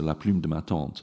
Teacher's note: it contains two phonemes that are really hard for English speakers to pronounce, namely the U of plume and the nasalized vowel in tante